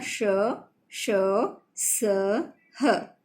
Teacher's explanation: इनको बोलते वक्त मुंह से गर्म हवा बाहर निकलती है इसलिए इसे ऊष्म व्यंजन कहते हैं।